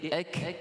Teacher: Aktsar yang lebih banyak kan. Baik, huruf kaf yang sukun dibaca dengan bacaan yang bersifat hamas. Maknanya ada udara yang lebihan. Bukan bacaan itu melantun.